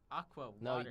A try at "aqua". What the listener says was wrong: like, I could hear the C in it.